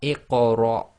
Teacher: you literally shorten the Ra, which would normally be one long, cut it down to about half the length. So it'd be Iqra instead of Iqra.